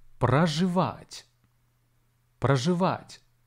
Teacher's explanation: The stress falls on the last syllable.